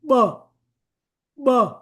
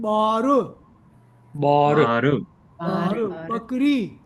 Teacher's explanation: Now, when you want to pronounce B, B, you are opening the lips but sucking the air in